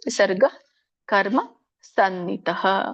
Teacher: ವಿಸರ್ಗ ಅಂತ ಇದೆ, ಅಲ್ಪವಾಗಿ ಉಚ್ಚರಿಸಿ ಹಕಾರವನ್ನ ಅಲ್ಪವಾಗಿ ಉಚ್ಚರಿಸಬೇಕು.